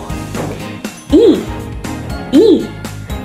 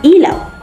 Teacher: ang posisyon ng dila ay nasa mataas at ang bahagi ng dila ay nasa harap